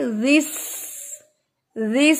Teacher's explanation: اس میں زیس نہیں پڑھیں گے، زال چونکہ نرم حرف ہے تو اس کو سین کے ساتھ آپ نے جوائن کرنا ہے. زال جو ہے وہ نرمی سے پڑھا جائے گا اور سین کے اندر سیٹی آئے گی